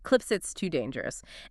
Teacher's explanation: Quickly the S in cliffs links to the I in it. >> Cliffs it becomes cliffsit. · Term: voicing link